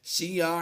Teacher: عین دو زبر عین کی تنوین کو ہم نے ایک زبر کے ساتھ لمبا کرتے ہوئے پڑھنا ہے ، یعنی الف مدہ سے کنورٹ کر دیں گے، شیعا کل